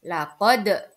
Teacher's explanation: bacaan Qalqalah Kenapa kok dinamakan bacaan Qalqalah karena ada Dal sukun ketika ada Dal sukun maka harus dibaca memantul